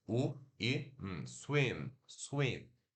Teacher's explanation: Se escreve S-W-I-M, como se fosse swim, né? Mas se pronuncia o som de S, o U consonantal, né? Que é o U de uva, biquinho mesmo, né? U, mas ele é curto, não é U, é U.